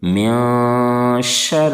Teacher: خلق ومن شر غاسق اذا وقب، ومن شر غاسق اذا وقب، یہاں پر بھی دیکھیں نون ساکن کے بعد حروف اخفا کے 15 حرفوں میں سے شین ہے، اس لیے اخفاء حقیقی ہوگا۔ نون کی آواز کو ناک میں چھپا کر غنہ کے ساتھ پڑھیں گے۔ من شر، را کے نیچے زیر ہے اس لیے را کو باریک کریں گے۔